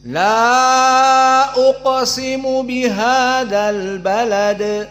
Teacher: Intabih lama taqra qaf mufakhamah wa qalqalah wusta sugra.